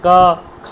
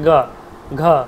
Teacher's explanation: অঘোষ বলেছি তো, অঘোষ হচ্ছে প্রথম দুটো, ওই যে বর্গের 3 4 5 হচ্ছে ঘোষ, 3 4 5 ঘোষ, আর প্রথম দুটো হচ্ছে আপনার অঘোষ, ঠিক আছে। মানে প্রথম দুটো উচ্চারণ করতে ক আর খ যখন উচ্চারণ করছেন তখন দেখুন আপনার বেশি গম্ভীর ধ্বনি আসে না, ক খ গ, এই গটা যখন উচ্চারণ হালকা তোমার আপনার গম্ভীর আসে, গ ঘ, ওই যে গম্ভীর ধ্বনি নির্গত হচ্ছে না হালকা করে, সেই জন্য এটাকে বলছে ইসে ঘোষ, আর আগের দুটোকে বলছে অঘোষ, ঠিক আছে।